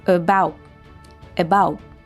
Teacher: The A in about becomes a schwa, and the T is a glottal T.